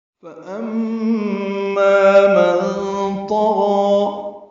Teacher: فَأَمَّا مَن طَغَى، فا کو جلدی پڑھنا ہے، ام میں میم مشدد پہ غنہ ہے اور ما الف مدہ ہے، 2 حرکات لمبا ہے۔ من طغى،